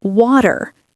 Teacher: The T becomes a D